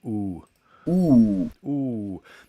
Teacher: tongue all the way back in the mouth but still as high as possible and round our lips